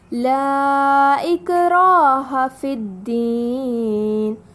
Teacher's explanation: را پر زبر ہے اور اس کے بعد الف ہے تو ہمیں یہاں الف مدی کا قاعدہ ہے، 2 کا مد دینا ہے